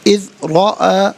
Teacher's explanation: را پر زبر ہے، را کو پر کر کے پڑھیں گے